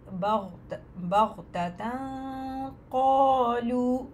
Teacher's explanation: گی، پھر تا پہ آئیں گی دوبارہ اسمائلنگ فیس، بغتۃ، قالوا، تنوین کے بعد قاف ہے، دو حرکت غنہ کرتے ہوئے قاف پہ جائیں گے ، بغتۃ، قالوا، قالوا، قالوا، الف مدہ اور پھر واو مدہ